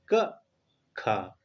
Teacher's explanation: तो हमारा खा होता है वो कंठ से बोला जाता है